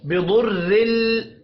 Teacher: बिदुर्रिल दाद हुरूफ मुस्तअलिया है, पुर पढ़ा जाएगा। रौ को जेर की वजह से बारीक पढ़ेंगे।